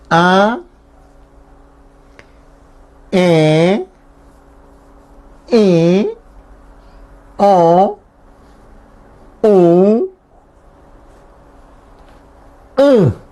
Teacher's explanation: Nasales porque se pronuncia acá en la nariz. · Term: vocales nasales